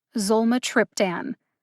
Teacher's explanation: the syllable with the secondary emphasis zol gets almost as much emphasis as tripp